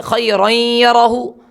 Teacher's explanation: رواں کے اندر نون آدھا نون پڑھا جا رہا ہے، غنہ ہو رہا ہے. خیرن یرہو، تو لہٰذا را یا 2 زبر پڑھیں گے.